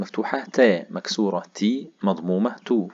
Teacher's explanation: التاء بتخرج من طرف اللسان. طرف اللسان عندما يلاقي منبت أو أصول الثنايا العليا. الثنايا العليا يعني السنتين اللي فوق، أصول ومنبت خروجهم لما طرف اللسان دوت يوصل للمنطقة دي هيخرج حرف التاء.